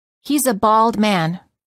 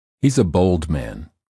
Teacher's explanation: and O the following pairs of sentences are the same except the first one has a word with an ah sound and the second one has a word with an O